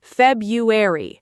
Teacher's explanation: The first R is almost invisible in natural speech.